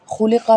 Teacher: خا ادا ہوتا ہے حلق کے اوپر والے حصے سے اور قاف کو بھی موٹا پڑا جائے گا۔